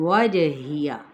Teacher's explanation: انی غنہ کرتے ہوئے یا مدہ وجہت واو کی زبر کو جیم کے ساتھ اور پھر جیم کی زبر کو ہا اقصی حلق سے ادا کرتے ہوئے تاکہ پیش کو واضح کریں گے لیکن لمبا نہیں کریں گے. وجہیہ جیم پہ کلکلا ہا وسطی حلق سے اور یا کو ادا کریں گے لیکن حرکت کو لمبا نہیں کریں گے.